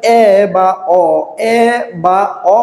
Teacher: জিহব্বা আ উচ্চারণের থেকে একটু উপরে গেছে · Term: নিম্ন মধ্য স্বরধ্বনি